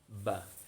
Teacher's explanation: Huruf ba itu termasuk kelompok huruf yang ada di bibir. Nah, jadi mengucapkannya adalah pertemuan antara bibir atas dengan bibir bawah, ba. Nah, kalau kita ilustrasikan di sini, maka dia adalah pertemuan bibir atas dengan bibir bawah.